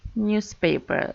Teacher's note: so we stress the first syllable